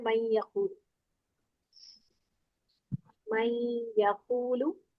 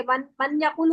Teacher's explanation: अब यमून लफ्ज जब भी आएंगे, अब यहाँ पर होगा इदगाम गुन्ना के साथ, यानी पढ़ा या मीम वाव नून जाएगा इसका, और जो नून साकिना शुरू में है उसका सिर्फ गुन्ना अदा हो